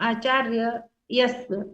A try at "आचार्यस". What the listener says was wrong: यश नहीं, आचार्यस। आचार्य तो था ही, और स एक्स्ट्रा जोड़े ना, तो आचार्यस।